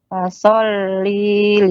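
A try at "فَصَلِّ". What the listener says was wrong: Nah, linya pendek Ummu. Ya.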